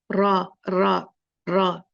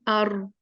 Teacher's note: जो है आवाज निकलती यह मखर है रा के निकलने का टिप ऑफ द टंग जुबान की नोक जब ऊपर तालो में सामने के मसूड़ों से टकराए तो र अदा होता है